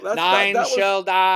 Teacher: a speaker has Vincent Price's voice, but it's more of a monotonous, like robotic voice.